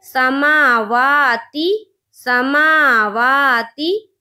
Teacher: ती ता के नीचे ज़ेर की हरकत है, ज़ेर को जल्दी पढ़ें, थोड़ा भी ना खींचे। मारूफ पढ़ें, मजहूल आवाज़ से बचें, जैसे समावाती